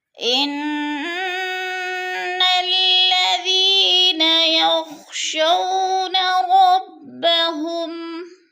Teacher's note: فسحقا لأصحاب السعير إن الذين يخشون، ان کی نون مشدد ہے، الذی پہ یا مدہ ہے، یخشونا شو پہ وہ لین ہے، لمبا بھی نہیں کرنا، جھٹکا بھی نہیں دینا۔